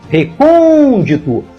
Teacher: a palavra recôndito tem quatro sílabas e a mais forte é a antepenúltima recôndito portanto esta palavra é proparoxítona e por essa simples razão